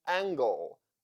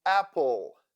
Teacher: sounds like a combination of a main sound L and the schwa sound like specifically So LE, LE, little. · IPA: /əl/